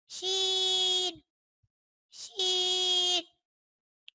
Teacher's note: شین، شین پہ 3 نقطے ہوتے ہیں اور یہ زبان کے درمیان اور تالو کے درمیان والے حصے سے ادا ہوتا ہے